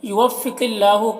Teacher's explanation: قاف کو پر پڑھنا ہے، حروف مستعلیہ میں سے ہے اور اللہ کو باریک پڑھنا ہے اور اس میں کھڑا زبر ہے جو الف مدہ کی طرح ہے۔